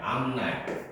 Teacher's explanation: 비음화 현상에 따라서 음절 끝에 비읍이 미음의 영향으로 미음으로 바뀐다.